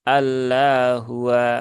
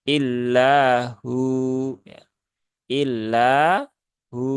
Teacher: waw sukun setelah dhammah. Maka dia masuk dalam kategori mad asli dibaca dua harokat